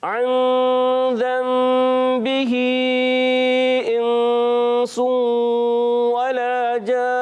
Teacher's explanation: اور یہ ہوگا ولا میں کیا ہوگا ایک الف کھینچ رہے ہیں واو کو بغیر کھینچے ادا کریں گے اور لام الف زبر لا ایک الف یعنی 2 حرکات کھینچیں گے